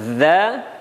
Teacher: Za cara mengucapkannya yakni mempertemukan ujung lidah kita bertemu dengan ujung gigi seri atau ujung gigi depan. Pengucapannya ketika fathah za, kasrah zi, dan dhammah zu dengan membulatkan bibir.